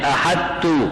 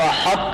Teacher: ہا کے بعد پہلے طوا کی ادائیگی ہو، طوا کی موٹی ادائیگی محسوس ہو، پھر تا ادا ہو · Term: ادغام ناقص